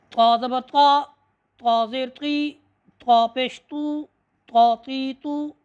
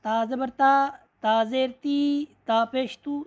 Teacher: اس میں آپ نے یہ بھی دیکھنا ہے کہ زبان جو ہے وہ اوپر تالو کے ساتھ چمٹ رہی ہے، اور اس کے بعد جب آپ منہ کو کھولتے ہیں تو آواز کیا ہے؟ موٹی ہو جاتی ہے